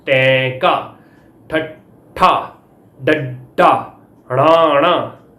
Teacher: ਇਹਨਾਂ ਦੇ ਉਚਾਰਨ ਵੇਲੇ ਸਾਹ ਦੀ ਹਵਾ ਨੂੰ ਜੀਭ ਦੀ ਨੋਕ ਪੁੱਠੇ ਪਾਸਿਓਂ ਸਖਤ ਤਾਲੂ ਨਾਲ ਜੁੜ ਕੇ ਰੋਕਦੀ ਆ। · ਤੁਹਾਨੂੰ ਪਤਾ ਲੱਗਣਾ ਕਿ ਜੀਭ ਉਲਟਦੀ ਆ, ਰੈਟਰੋਫਲੈਕਸ ਹੁੰਦੀ ਆ। ਇਸ ਕਰਕੇ ਇਹ ਜਿਹੜੀਆਂ ਨੇ ਉਲਟ ਜੀਭੀ ਧੁਨੀਆਂ ਮੰਨੀਆਂ ਜਾਂਦੀਆਂ ਆ।